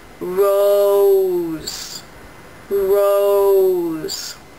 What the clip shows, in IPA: roʊz